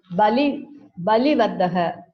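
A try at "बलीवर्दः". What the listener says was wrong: Balivardaha. Bali is Ikaranta. It's a long vowel. Balivardaha.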